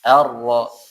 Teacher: ro ujung lidah sama langit-langit atau gusi ya, bagian atas. Ar-ra.